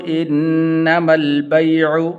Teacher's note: بیع یہ یا حروف لین میں سے ہے تو اس لیے اس کو لمبا نہیں کریں گے۔